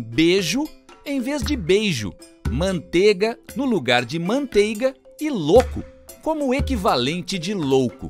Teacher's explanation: os ditongos ei e ou passaram a ser pronunciados como e e o em algumas regiões do país